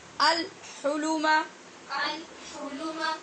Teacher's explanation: احلم نہیں پڑھ رہے کیونکہ ہا حروف قمری میں سے ہے، لہٰذا یہاں لام کا اظہار ہوا ہے، الگ پڑھنے کی صورت میں بھی اور ملا کے صورت میں بھی.